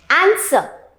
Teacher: आर की sound create ही नहीं हो रही है.